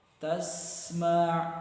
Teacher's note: Jadi ketika baca tasma' kedengaran s-nya gitu, seperti suara desis burung ya. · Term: sin bersukun